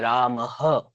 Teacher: देखिए रामः ये देखिए हम सांस छोड़ रहे हैं है ना अंत का जो सांस हमारा निकल के आ रहा है जोर से गहरी जो सांस निकल के आ रहा है वही हो गया हमारा विसर्ग